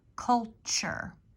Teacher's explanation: this was like a CH sound where the T is